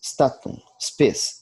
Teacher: O S impuro, é o S inicial, seguido de consoante que não seja C, deve ser bem pronunciado de tal forma que não se ouça a vogal E